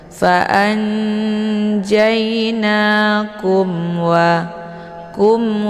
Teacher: dan mim maka ini dinamakan dengan izhar syafawi jadi cara bacanya mimnya dibaca jelas cukup ditekan saja tidak perlu ditahan